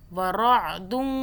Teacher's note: را کو موٹا پڑھیں، را عین زبر را